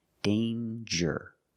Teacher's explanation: There's no nasal sound. There's no m. It's a regular n. Danger with the J sound like jump and juice.